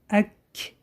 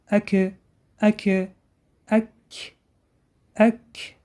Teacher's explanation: Дорогие друзья, буква Каф, когда с сукуном, читается так. Ак, чуть-чуть выдох. Это называется свойство хамс.